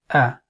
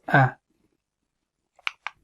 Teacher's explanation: the articulation point for Hamzah is the deepest part of the throat. As we explained before, that we have three parts of the halq, the throat, and this is from the deepest part, that is closest to the chest.